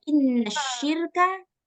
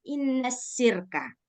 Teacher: Nah, kita nggak praktekkan nih sifat tafasyinya, salah satu sifat yang harus ada dalam huruf shin. Nah, maka yang tadinya harusnya kita baca inna syirka, jadi kita baca inna sirka. Kita hilangkan sifat tafasyinya.